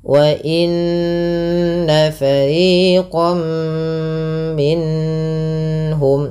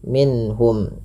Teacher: Izhar artinya jelas, halqi berarti hurufnya yang dikeluarkan dari tenggorokan, yaitu karena ha termasuk huruf tenggorokan dan sebelumnya nun, maka suara nunnya harus jelas tanpa ditahan, tanpa ada penahanan. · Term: izhar halqi